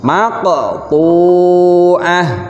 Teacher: Nah, di sini huruf qafnya itu dalam harokat sukun. Cara membacanya harus dipantulkan. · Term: qalqalah